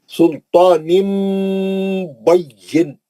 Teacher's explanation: نون کی آواز کو میم سے بدل کر غنہ سے پڑھتے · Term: اخلاب